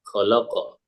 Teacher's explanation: lamnya karena dia bukan huruf isti'ala, jadi dibaca tipis